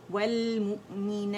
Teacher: تا کو ساکن کر دیں گے, اس کا ہمس واضح کریں گے